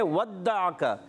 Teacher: ودعک, ودع میں واو ہونٹوں کی گولائی سے, دال مشدد ہے ذرا رک کر ادا کریں گے. عین حلق کے درمیان والی حصے سے